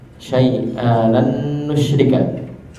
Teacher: Huruf nun di sini betul-betul hilang.